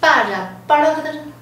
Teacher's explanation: 它四声呢变成一声，好，带一个卷舌的颤音的韵尾哈 。那如果你不会念颤音的话，你念▁bar▁bar▁也可以，有个▁r▁的韵尾。好，那如果可以颤